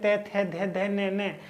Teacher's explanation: जो हमारी जीभ होती है दांत से टकराती है, इसलिए हम इसे दंत्य बोलते हैं।